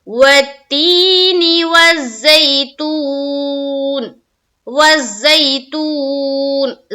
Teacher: تی میں بھی کھینچنا ہے اور تو میں بھی کھینچنا ہے، صرف زئی میں نہیں کھینچیں گے، یہ آئلین کا قاعدہ ہے۔